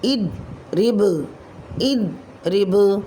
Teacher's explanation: با ساکن حالت میں یہاں کلمے کے آخر میں آ رہا ہے تو قلقلہ کبریٰ ہوگا